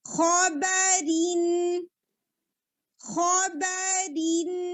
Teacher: خو ہیوی با لائٹ دین کسرہ کو شارپ رکھیں گے اور پھر اس کے بعد تنوین کا نون